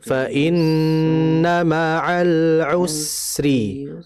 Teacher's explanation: Nah, sin ini mengalir, hanya saja sin ini alirannya lebih lama dibandingkan huruf lam. Jadi kita tahan fa inna ma'al usri.